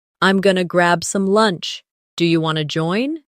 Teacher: I'm going to becomes I'm gonna, want to becomes wanna. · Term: reduce sounds